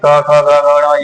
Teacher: कंठ वाली ध्वनि ये हो गई क ख ग घ ण ये सभी कंठ वाली ध्वनि होती है